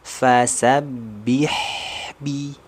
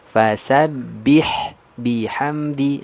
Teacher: kalau ketemu huruf H sukun berarti dia harus mengalir suaranya. Alirkan suaranya sempurna. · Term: rokhawah